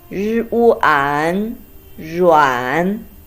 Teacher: a combination of 日 and uan with the third tone